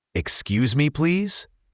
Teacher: When you ask someone to move, it's often a polite upward tone at the end. · Here, excuse has an X sound that sounds like x or kz, and please should end with a Z sound, not an S sound